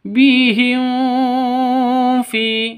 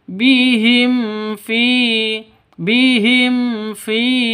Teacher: mim mati bertemu dengan Fa cara bacanya jelas terang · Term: izhar syafawi